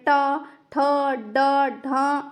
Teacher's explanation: जो आपकी टंग है, जो आपकी जीभ है, वो क्या करती है, ऊपर ताल्व को टच करती है, तो उन्हें ही मूर्धन्य व्यंजन कहा जाता है